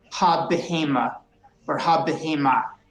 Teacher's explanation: we do actually give a little pronunciation to the first shva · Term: vocal shva